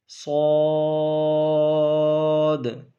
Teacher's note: آواز بھی ہم نے دکھائی، موٹا بھی اس کو پڑھا ہے، اور آخر میں جو اد آواز آئی ہے یہ کلکلا کی ہے، یہ بھی آنی چاہیے